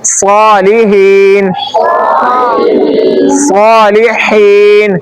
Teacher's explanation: ہا کو کہاں سے نکالیں گے؟ وسط حلق سے۔